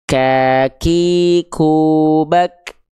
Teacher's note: pastikan ketika kita melafalkan kaf dia keluar perecikan nafasnya